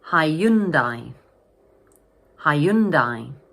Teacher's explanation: this word has three syllables and the middle syllable is stressed